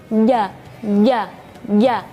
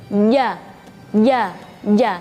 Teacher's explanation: Karena lidah itu tidak terlalu menempel ke langit-langit. Jadi ketika melafalkan huruf jim harus menempel ke langit-langit.